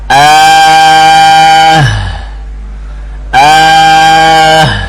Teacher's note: Berarti ha dari pangkal tenggorokan